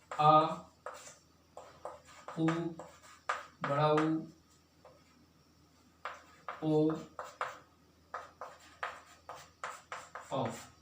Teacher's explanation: जिस स्वर का उच्चारण करने में जीभ के पश्च भाग मतलब पीछे भाग का प्रयोग हो, पीछे भाग का यूज हो, उसे क्या कहेंगे, पश्च स्वर कहेंगे